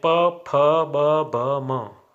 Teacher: इनका उच्चारण होठ से होता है, यानी होठों के स्पर्श से ये बोले जाते हैं, इसलिए इन्हें ओष्ठ्य व्यंजन कहते हैं।